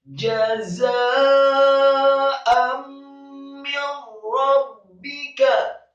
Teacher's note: Jazaa'an, setelah za yang fathah dengan mad yang sempurna 4 sampai 6 harokat, kemudian hamzah yang fathah tanwin bertemu dengan huruf mim, hukum bacaannya adalah idgham bi gunnah, memasukkan dengan gunnah. · jimnya dibaca tafkhim tebal, fathah satu harokat